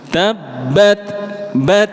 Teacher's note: kalau disukun huruf ta bunyinya t dengan suara hams · Huruf tak marbutah dengan tak yang biasa bunyinya persis, hanya bedanya ketika disukun. Kalau disukun huruf tak bunyinya T dengan suara hams.